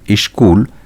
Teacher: শব্দের আদিতে হ্রস্ব ই স্বরধ্বনিটি এসে যুক্ত হয়ে ধ্বনির পরিবর্তন ঘটিয়েছে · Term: সরাগম